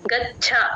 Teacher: చ కింద చ ఒత్తు ఎప్పుడు వచ్చినా సరే ఒకసారి గాలి వదలాలి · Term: మహాప్రాణం